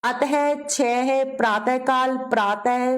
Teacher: विसर्ग में ह की ध्वनि आती है ह की आवाज आती है इसका उच्चारण ह की भांति होता है